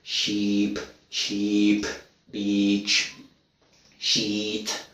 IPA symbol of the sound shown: i: